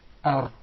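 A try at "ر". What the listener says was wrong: There is a repetition of the Ra. He actually pronounced several Ra's. We just want one Ra. Ar.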